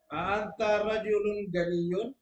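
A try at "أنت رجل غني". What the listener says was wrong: Ini lisannya lisan Makassar Tulen nih. A anta rajulun ghaniyun. Nggak bisa kada jadikan ro, go. Coba bilang ro. Rojul. Ra. Rajul. Rojul, rajul. Berarti rojul ghani, ghaniyun.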